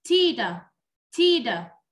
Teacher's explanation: Đây là tiếng Anh Mỹ, cho nên là mình sẽ nghe giống âm d